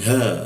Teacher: La di bawah hidung, lalu masuk ke ha, huruf H. Nah, ingat huruf H itu di bawah tenggorokan bagian bawah dia. Posisinya dia hembusannya cukup kencang ya. Ha, seperti itu.